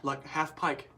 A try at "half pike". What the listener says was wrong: On the half pike. There's no L in half pike. HAFFPIKE.